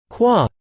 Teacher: You get into the velar stop sound calma, which means lamp. If you constrict your lips again into an oo sound while sounding ka, you get qua sound named quesse, which means feather.